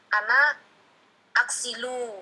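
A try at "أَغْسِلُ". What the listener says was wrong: Nah, aksilu. Lu-nya jangan dipanjangin, itu kebiasaan ya. Nanti berubah nanti. Aksilu. Nah, jangan dibiasakan yang panjang itu ya. Kalau pendek jangan dibiasakan panjang.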